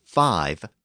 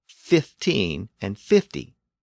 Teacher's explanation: 5 has a long I sound, but 15 and 50 have a short I sound.